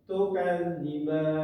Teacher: di dalam huruf za ini ada tasdid maka bacanya harus ditekan selama kurang lebih dua ketukan